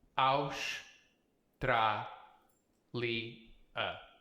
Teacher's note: You're going to hear a a lot of shus here in um Portugal because an S at the end of a syllable is sh. This is one syllable.